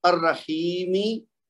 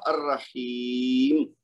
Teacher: آخری حرف جو ہے اس کی حرکت ہم گرا کے اس کو ساکن کر دیں گے اور اس کو پڑھنے کا انداز پھر مختلف ہو جائے گا۔